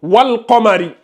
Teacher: lunaire, on a le soukoun sur le lam et on prononce bien le soukoun. On dit wal Qamari.